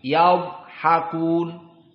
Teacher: Di sini dha bukan qalqalah, tetapi dia adalah huruf tafkhim. Dan dha di sini disukunkan, yad, bukan qalqalah tetapi hanya dalam keadaan tafkhim